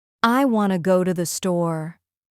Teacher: For example, in the sentence, I want to go to the store, the important words are want, go, and store. The other words become softer and faster. · Notice how to becomes ta, or even just a quick sound.